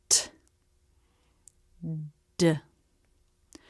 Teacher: The teeth come together and the top front of the tongue is at the roof of the mouth. The air stops in the throat. Then the teeth part and the tongue pulls down to release. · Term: true T and D